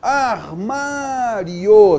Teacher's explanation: semivogal mais vogal, o som cresce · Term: ditongo crescente